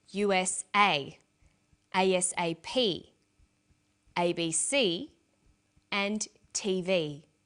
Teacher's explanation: each letter in the abbreviation is pronounced separately, but the last letter is pronounced more strongly because it carries the primary stress. So we say USA, ASAP, ABC, and TV.